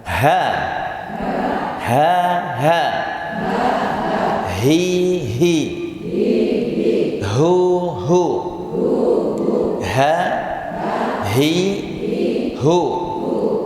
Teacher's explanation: Jadi ha itu di pangkal tenggorokan. Tapi kalau kita mengucapkan rasanya kayak dari sini ya, dari dada.